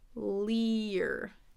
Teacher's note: it's a long 'e' into that 'er' sound